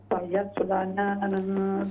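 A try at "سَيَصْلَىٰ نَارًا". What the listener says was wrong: सयस्ला खड़ी जबर है यहाँ पर। सयस्ला नारन।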